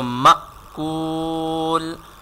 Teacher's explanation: you have to read this hamza with jerking sound